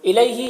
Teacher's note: یہاں پر یالین ہے، اسے نرم آواز کے ساتھ جلد پڑھیں گے۔